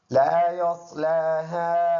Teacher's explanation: یہ لام الف مدہ ہے، لام کے بعد یہ الف مدہ ہے، لام کے اوپر زبر ہے اور الف پر کچھ نہ ہو، پہلے لفظ پر زبر ہو تو وہ الف مدہ ہوگا، اور صاد پر ادا ہونے والا حرف ہے، لام کے اوپر کڑی زبر ہے تو 1 الف کے اندازے سے اس کو لمبا کریں گے، اور اس الف پر یہ والا جو مد ہے یہ اس کو یعنی یہ واجب کی درجہ نہیں ہے، تو اس کو مد کرنا بہتر بات ہے۔